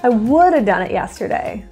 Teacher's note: that have just turns to uh that's a really big reduction